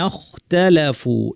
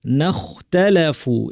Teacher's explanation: গয়নের বৈশিষ্ট্যগুলো খতেও আছে, গয়নের আওয়াজ জারি ছিল, খয়ের আওয়াজ জারি, গয়ন ভারী, খও ভারী, কিন্তু গয়নে বাতাস বন্ধ ছিল, ফলে জোরালো আওয়াজ হয়েছে। খতে বাতাস জারি থাকবে, ফলে আওয়াজ জোরালো হবে না, ফিসফিসে আওয়াজ হবে, এরকম শুকনো আওয়াজ হবে।